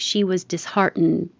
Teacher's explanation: And you don't have to release the D. So if it's at the end of the sentence, you wouldn't hear it at all.